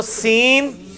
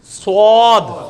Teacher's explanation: سین کو موٹا کریں گے تو سین, صاد